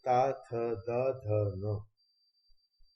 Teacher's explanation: इनको बोलते समय दांतों का उपयोग होता है, इनका उच्चारण स्थान दांत है, इसलिए इन्हें दंतव्य व्यंजन भी कहा जाता है।